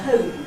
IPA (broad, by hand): həʊm